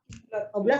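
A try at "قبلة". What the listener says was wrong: Kalau qoblah begini nggak pakai tak marbuto sebelum. Qoblah artinya ciuman. Kalau pakai fathah, qoblah ciuman. Qoblah tuhum dan ciuman mereka satu. Nggak nyambung kan? Bukan. Apa bacanya? Qiblah. kasroh. Qiblah. Lihat sama beda apa? Ki jadi kok. Jauh banget ya. Kalau pakai qoblah, atau kublah, atau qoblah, begitu. Artinya ciuman. Qoblatuhum wahidah. Ciuman mereka satu. Nggak nyambung. Yang betul dibacanya apa?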